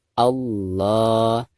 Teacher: ketika kita membaca lam jalalah di sini itu harus ditafkhimkan atau dibaca tebal ya. Karena sebelum lam jalalah tersebut ada huruf yang berharakat fathah yaitu a ya.